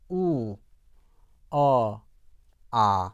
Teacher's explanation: 우를 했었을 때는 그 입천장과 혀의 높이가 아주 가깝습니다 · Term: 고모음